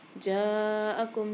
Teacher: جیم کے ساتھ الف اور مد دونوں ہیں, تو یہاں پر ہم 5 سے 6 الف کی مقدار جیم کو کھینچ کے پڑھیں گے